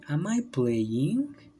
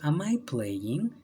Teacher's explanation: tenemos que mantener esa entonación de pregunta como en el español incluso como si fuera ascendente a maipú de ying como exagerando en un poquito al principio